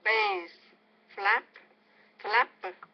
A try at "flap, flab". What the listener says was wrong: Make it longer. So flap, flab.